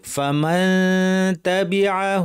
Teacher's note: আমাদের উপরের দাঁতের গোড়ার কাছে জিহ্বা নিয়ে না লাগিয়ে তা বলার জন্য রেডি করে নাক থেকে গুন্না করতে হবে